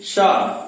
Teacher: शा इसका उच्चारण करते समय तालु पे स्पर्श होता है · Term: तालव्य सा